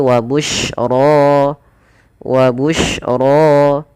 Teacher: ro dibaca dengan tebal rnya